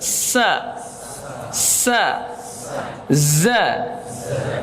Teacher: Shafir adalah tajamnya suara dikarenakan ia keluar dari celah yang sempit antara ujung lidah dengan kedua gigi seri atas dan bawah. Itu hurufnya shad, zai sama sin.